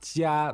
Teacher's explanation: So 家, that's first tone.